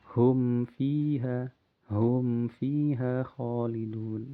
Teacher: Jangan sampai hum fiha, tapi cukup dijelaskan dengan sifat bainiyahnya pada huruf mim, kemudian masuk ke huruf fa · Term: mim yang izhar